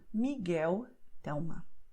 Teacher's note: And then you have the letter L at the end of the word, and also L at the end of the syllable if the next letter is a consonant, and then the sound will be U